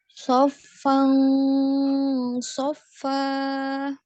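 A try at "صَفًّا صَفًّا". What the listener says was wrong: Masuk di so-nya juga naik ya. So, jangan so, tapi so. So-nya jangan nggak tebal ya, so-nya tebal. So, gitu ya. Jangan so.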